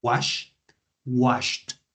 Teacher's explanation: Cuando tenemos el verbo wash, es el sonido de la SH. Entonces su pasado se pronuncia con sonido de T.